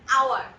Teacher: বাট here আমরা কিন্তু এটাকে হাওয়ার বলি না। H আছে বলে কিন্তু আমরা এটাকে হাওয়ার বলছি না, আমরা এটাকে কি বলছি, আওয়ার